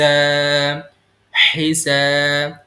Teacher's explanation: ح یہ حلق کے درمیان والے وسط حلق سے ادا ہوگا